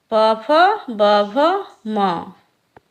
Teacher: जिन व्यंजनों के उच्चारण में दोनों ओष्ठों द्वारा श्वास का अवरोध होता है उन्हें ओष्ठ व्यंजन कहते हैं